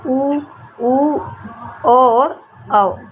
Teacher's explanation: वृत्तमुखी में होठों की आकृति गोल होती है